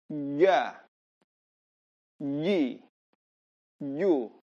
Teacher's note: Lidah bagian tengah diangkat, tapi dia ditempelkan ke langit-langit. Kemudian diucapkan tanpa ada suara desis. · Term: jim